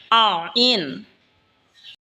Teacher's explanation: আইন হলকের মধ্যখান হইতে উচ্চারণ হবে আইন। এই হা যেখান থেকে উচ্চারণ হয়েছে সেখান থেকেই আইনও উচ্চারণ হবে।